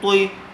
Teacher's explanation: تو کو پر کیجیے، تو زیر توئی، تی نہیں توئی